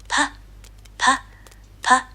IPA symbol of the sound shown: p